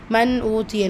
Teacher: நூன் சுக்குனை தொடர்ந்து ஹம்சா இருக்குது. இத்ஹார் உள்ளதை உள்ள மாதிரி ஓதணும். குன்னா செய்யக்கூடாது.